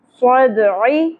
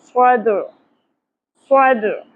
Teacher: صاد عین ساکن ہو جائے گا آیت مکمل ہونے کی صورت میں اور وقف کرنے کی صورت میں. صدعی نہیں پڑھیں گے، صد صد.